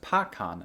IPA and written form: pɑkɑn (pecan)